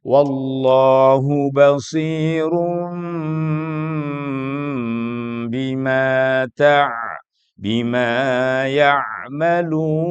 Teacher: caranya membaca iqlab adalah mengganti Nun menjadi mim dengan ditahan saat membaca